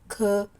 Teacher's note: ನಾವು ಬಹಳ ಉಸಿರು ತಗೊಂಡು ಹೇಳ್ತಿವಲ್ಲ ಅದಕ್ಕೆ ವಿಸರ್ಗ ಅಂತ ಹೇಳ್ತೀವಿ